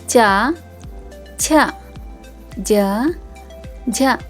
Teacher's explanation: ನಾವು ದವಡೆಯ ಸಹಾಯವನ್ನು ಪಡೆದುಕೊಂಡು ಇವುಗಳನ್ನ ಉಚ್ಚರಿಸುತ್ತೇವೆ ಆದ್ದರಿಂದ ಇವನ್ನ ತಾಲವ್ಯ ಅಕ್ಷರಗಳು ಅಂತ ಕರೀತಾರೆ